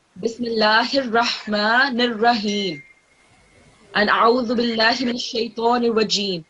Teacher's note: you're not meant to prolong the Ra